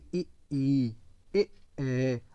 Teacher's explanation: जीभ का जो आगे वाला नोक है वो सक्रिय है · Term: अग्र स्वर